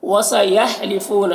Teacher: یہاں پر واو مدہ ہے تو ایک الف کے برابر کھینچیں گے